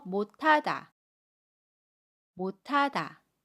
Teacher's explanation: 받침 시 옷은 받침소리 디귿으로 발음하고이 받침소리 디귿이 첫소리로 이동을 합니다 그래서 디귿 히읗이 합쳐져서 타로 발음해요 · 디귿과 히읗이 합쳐져서 타로 발음해요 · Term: 거센소리 되기 현상, 거센 소리 되기